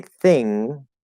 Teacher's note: when we say thing, there's no G there at all. There's no glottal stop G, there's no anything.